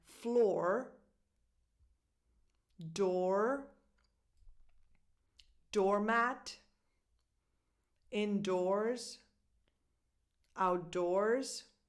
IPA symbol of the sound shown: ɔ